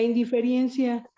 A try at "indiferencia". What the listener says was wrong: Indiferencia. indiferencia. Sin la I.